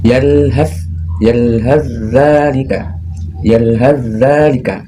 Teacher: jadi bunyinya ha langsung masuk ke huruf zal di sini